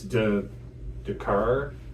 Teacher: With, again, the TH sound, you guys will often say de, like it's de car, where if the France use more of a Z sound when they're speaking English.